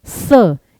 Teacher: स जीभ दांतों को टच करती है, दंते।